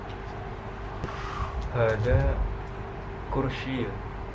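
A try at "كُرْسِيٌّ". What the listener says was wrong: Jadi harus pakai tanwinnya ya. Kursiyun.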